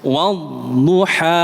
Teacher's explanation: Tapi kalau yang tepat ha ini hanya dua harakat saja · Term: mad thobi'i